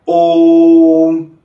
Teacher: for example ओम है ना तो जब इस ध्वनि का हम उच्चारण करते हैं तो ओ ये जो ओ है इसका उच्चारण अधिक लंबे समय तक अधिक समय तक किया जाता है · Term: प्लुत स्वर